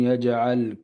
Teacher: جیم میں قلقلہ ہوگا. جیم ساکن ہے اور آگے زبر ہے.